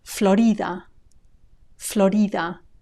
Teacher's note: notice also the stress it's not stressed on the o the way it is in English but on the I